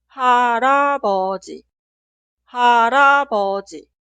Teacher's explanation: En la pronunciación, la consonante final 리을 se traslada al lugar de i응 en la sílaba posterior, porque i응 consonante inicial es muda. Y ahora este 리을 pronunciamos como consonante inicial de esta sílaba.